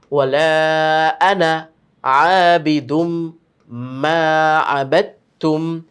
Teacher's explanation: তো আমরা খেয়াল রাখবো, এই যে এই আনায় কিন্তু টান হয় না। যদিও আমরা দেখতে পাচ্ছি জবরের বাম পাশে আলিফ রয়েছে, কিন্তু এই আনায় কখনো টান হবে না।